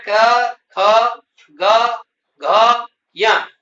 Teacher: इनका उच्चारण कंठ से होता है। इसलिए इनको कंठ वर्ण कहते हैं।